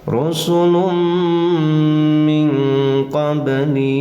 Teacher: ya tanwin bertemu mim dinamakan idgam nama idgamnya adalah idgam bunna bacanya pakai dengung tahan tekan lalu dengungkan